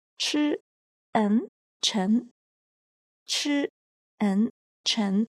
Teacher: Letters E and N are combined as well and are pronounced as N. And the character Chen follows the second tone, so it is pronounced as Chi, N, Chen.